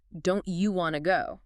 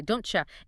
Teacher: those two words basically merge. They become one sound.